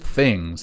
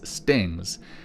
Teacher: he's always said st, and he says, like, instead of the word things, he says stings